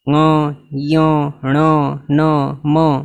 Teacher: બધાને માટે જોયું આ પણ બધા નાસિકા થી જ બોલાવ્યા છે મ ય ણ ન મ બધા નાસિકા ની મદદથી બોલાય છે